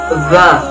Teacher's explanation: Makhrajul huruf dha terletak pada punggung ujung lidah dan ujung dua gigi seri yang atas. Sedangkan sifatul huruf dha terdiri dari 5 sifat.